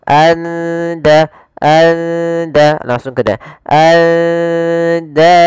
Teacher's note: Karena di sini kita baca samar di antara izhar dan idgham. Maka suara nunnya samarkan ke da. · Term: ikhfa hakiki